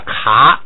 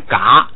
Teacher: 你像这个第二音节呢，卡就要不送气变嘎，然后呢，由于它是在第二音节不许升，所以它要变平调